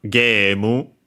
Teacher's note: Which becomes gemu, with a long vowel, of course, game. The A sound becomes simply long vowel, long E.